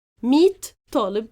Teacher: I have to shift the ta marbuta into t sound